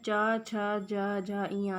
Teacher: तो जब हम इन वर्णों को बोलते हैं तो जो वो हमारे जीवा होती है, तो जीवा का स्पर्श किससे होता है? तालु से होता है, इसलिए इसका उच्चारण स्थान तालु होता है। और टा वर्ग में आते हैं टा, ठा, डा, ढा, णा।